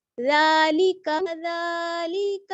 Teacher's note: لام کو نہیں کھینچنا ہے لی کا جلدی پڑھنا ہے